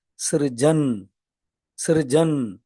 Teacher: நான் ரியும் சொல்லல ருவும் சொல்லல ரெண்டுக்கும் இடையில சிறு ஜா இன் சிறுஜன் அப்படின்னு சொல்லி இருக்கேன்